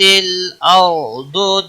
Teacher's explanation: ضاد حروف مستعلیہ میں سے ہے اس کو بھی موٹا پڑھیں گے